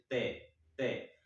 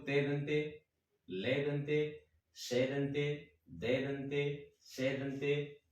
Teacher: यानी हमारी जिह्वा दांत को टच करती है